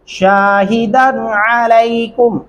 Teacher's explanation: عین گلے سے ادا کریں گے